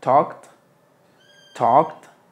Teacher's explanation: la l no suena tampoco talked y la a suena como o